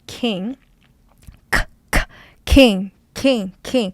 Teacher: When you say king, there's aspiration. C-K. Aspiration means there's a blast of air coming out.